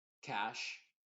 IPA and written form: kæʃ (Cash)